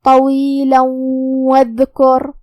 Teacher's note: ہم یہ تنوین کو واو میں ملا کے غنہ اور تشدید کے ساتھ یہ حکم کو ادا کریں گے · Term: ادغام بغنہ